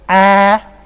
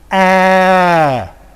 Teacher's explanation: let's first of all produce Cardinal four and then I will round my lips number four is a and a with rounded lips a and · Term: Cardinal vowel number 12